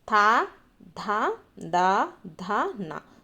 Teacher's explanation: త వర్గానికి సంబంధించినటువంటి వాటిని మనము దంత్యాలుగా చెప్తాము.